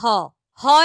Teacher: অর্থাৎ আমাদের কণ্ঠ নালি যেটা সেইখান থেকে হ টা বের হচ্ছে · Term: কণ্ঠনালীয় ব্যঞ্জন